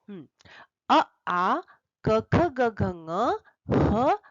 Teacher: इतने वर्णों का उच्चारण स्थान कंठ है इसलिए इनको कहते हैं कंठ वर्ण